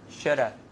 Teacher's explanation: A gets reduced to a schwa, right?